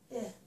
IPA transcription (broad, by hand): ɪ